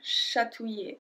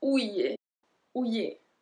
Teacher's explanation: So, we don't pronounce the L. Remember, the L is always, always like a long E.